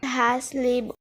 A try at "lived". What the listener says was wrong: The learner mispronounced the word lived as lib.